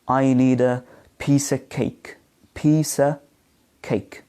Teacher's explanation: the word of, or the preposition of, is reduced to a schwa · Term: weak form